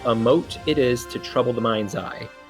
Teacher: that mind's eye, both of those need to be stressed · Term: indivisible syllables